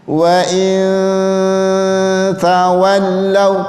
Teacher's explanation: Yang dibaca samar-samar itu suara nunnya. Jadi tidak dibaca jelas, tidak dibaca ang juga, tapi dia samar-samar. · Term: ikhfa